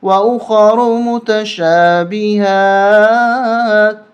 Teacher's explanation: خا اور را کو موٹا کریں گے اور اس میم پہ بھی غنہ ہوگا۔